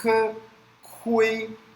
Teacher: Lembra que o K tem o som soprado, é K, Kui. E o UI, a última anotação daqui, como se tivesse um E.